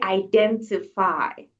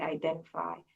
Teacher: in a British context, you will say identify because they pronounce the T, but an American is going to say identify.